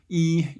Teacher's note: you do not round your lips you kind of spread them actually